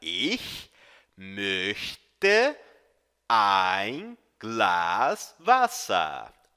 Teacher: Note que o CH é um chiado lá no fundo da garganta. Ich möchte ein Glas Wasser.